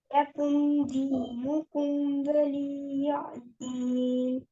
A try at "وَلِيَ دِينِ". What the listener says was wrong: اس آیت میں دیکھیں آپ, ولی کو لمبا نہیں کریں گے, ولیہ لام کے ساتھ ہی یا بول دیں گے, ولیہ. لکم دینکم ولیہ دین.